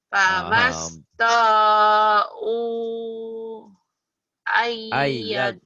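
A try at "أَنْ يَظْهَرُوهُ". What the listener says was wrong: Bukan ayyadho, ayyadharu. Sampai sini.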